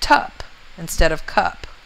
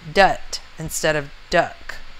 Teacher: children take sounds that should be produced in the back and they say them in the front. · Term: Fronting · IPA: /tʌp/